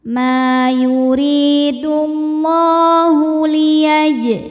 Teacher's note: Llah mad thabi'i muqaddar, karena huruf lam berbaris fathah panjang, maka dibaca panjang lamnya dua harakat.